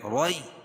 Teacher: یا ساکن سے پہلے را کے اوپر زبر ہے تو یائلین ہوگا، اس کو نرم آواز کے ساتھ جلدی ادا کریں